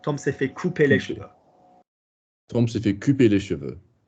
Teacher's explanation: can you put the stress on couper, not fait?